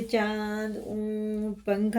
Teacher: ناک میں لے جا کے ایک الف کے برابر سائلنٹ کر کے پڑھنا ہے، اور اخفا کے بعد اخفا کی مقدار ایک الف کے برابر ہے۔ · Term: غنہ اور اخفا